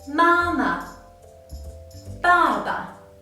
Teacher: Due to the influence of the surrounding syllables, the neutral tone loses its inherent tone. So it sounds much weaker and the tone pitch is shorter than that of the 4 tones.